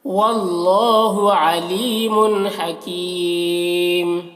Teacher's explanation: अली यहाँ पर या मद्दा है, मुन के तनवीन में इजहार हो रहा है, इस तनवीन को जल्द पढ़ना है। हकीमुन यहाँ पर मद्द आरिज वक्फ़ी होगा, तो इसमें तूल तवस्सुत कसर तीनों जायज़ होता है।